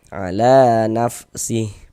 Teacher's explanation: Nah, ini menandakan huruf kalau di atasnya ada tanda seperti ini dibaca panjang. Sengaja la dibaca panjang. Pada tabi'i panjangnya 2 harokat.